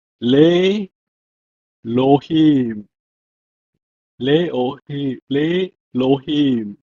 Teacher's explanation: There are some special cases with the quiescent aleph, meaning the aleph becomes silent